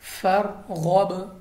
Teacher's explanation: چونکہ با ہمارے پاس حروف قلقلہ میں سے ہے تو ہم نے اس طرح پڑھا ہے آواز واپس لوٹتی ہوئی